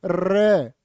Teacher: पाशविक है क्या जी हां प्र कंपित क्यों नहीं है भैया प्र कंपित होता है र बोलो र जीभ कांप जाएगी तुम्हारी र को प्र कंपित भी बोलते हैं और लुंठित भी कहते